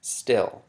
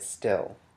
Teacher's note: if you put your hand in front of your mouth and you say still, you won't feel the flow of air after the t sound. That's how you know it's unaspirated. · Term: unaspirated voiceless alveolar stop